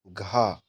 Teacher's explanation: मूर्धा से, कंठ से, तालु से या फिर दंत से। तो घा का उच्चारण स्थान जो है वह कंठ से है।